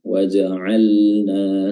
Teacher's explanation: di sini ada lam sukun bertemu dengan huruf nun ya eh di sini ee lamnya dibaca jelas ya dibaca izhar